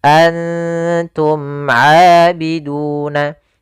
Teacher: ikhfa menutupi huruf ke arah huruf berikutnya, artinya nun tertutupi ke arah huruf ta